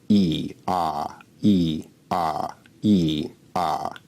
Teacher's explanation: e is an example of a high vowel and ah is an example of a low vowel